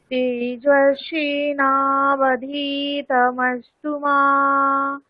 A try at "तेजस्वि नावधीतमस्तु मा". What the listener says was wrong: দীর্ঘি হবে না, শ্রী দীর্ঘি হবে না। তেজস্বী না, তেজস্বী না, বলুন।